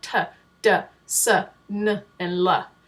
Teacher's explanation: alveolar consonants like duh duh duh nuh and LA where your tongue is actually touching the alveolar Ridge in order to make those sounds